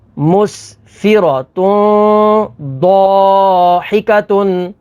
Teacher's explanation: تنوین کے بعد ضاد ہے، ضاد حروف اخفا میں سے ہے، تو یہاں پر اخفا یعنی غنہ کر کے پڑھیں گے